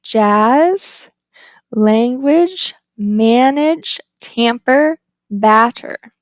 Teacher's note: it's the lowest of the five front vowels it's a point vow because it's the lowest used when it · It's low, it's a front vowel, your lips are unrounded, and it is lax. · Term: Ash, ash